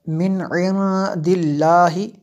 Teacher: نون ساکن کے بعد عین حروف حلقی میں سے ہے، یہاں پہ جو ہے یہ اظہار ہوگا اس لیے یہاں پہ ہم نے غنہ نہیں کیا۔ من عند اللہ، لفظ اللہ کو باریک پڑھیں گے، پور نہیں پڑھیں گے۔